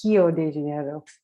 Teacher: to say rio de janeiro in portuguese it's hilo de janeiro the r's in portuguese are pronounced like an h